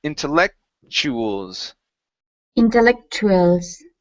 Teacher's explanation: whenever we have a tu kind of paired together like that um the TU changes to a CH sound